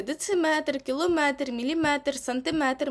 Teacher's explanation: дециметр кілометр міліметр сантиметр матимуть наголос на метр